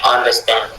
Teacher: understand, c'est effectivement la troisième qui est accentuée